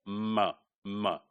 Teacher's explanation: are voice remember that all nasal sounds in English are voiced ma is bilabial because two lips they close together · M is bilabial because 2 lips, they close together.